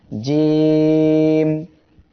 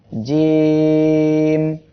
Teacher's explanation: এই অক্ষরটি জিহ্বার মাঝখান তার বরাবর উপরে এই তালুর সঙ্গে লাগিয়ে উচ্চারিত হবে।